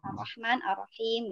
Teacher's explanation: rahmannya sudah betul pakai H yang halus, tapi pas rohimnya pakai H besar gitu ya.